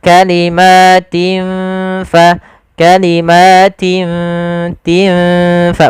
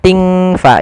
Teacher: Cara membacanya adalah kita samarkan huruf tinnya kepada huruf ta, seakan-akan kita langsung menghurufkan huruf fa. Maka kalimatin fa, kalimatin tin fa, bukan ting fa, jangan ang. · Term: ikhfa